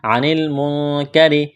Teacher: اخفا کریں گے یہاں پر، نون ساکن کے بعد کاف ہے، را کو باریک کرنا ہے۔